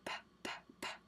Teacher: When you make the P sound, P, P, P, you don't have any vibration. You don't have to use your voice for any of that